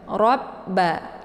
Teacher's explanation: ujung lidahnya ke langit robba karena ada tasydid di banyak yaitu ditekan dulu roanya kemudian leburkan suaranya ke ba robba ya posisi roa ini tetap dibaca tebal ya robba meskipun